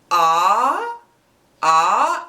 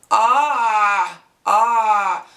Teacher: emphatic consonants the aim there is no equivalent in English 99 is a voiced pharyngeal fricative the sound is made by Contracting the muscle of the pharynx so that the flow of air through the throat is partially choked off